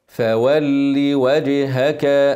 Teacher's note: اكثر الله ومزودهاش اوعى تجيب ياء بعدها لا لا لا لا كسره مع الشده من غير ياء من غير مد